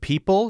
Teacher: The P-pop, lack of aspiration. Billions of people, target word people, sounds like beeple.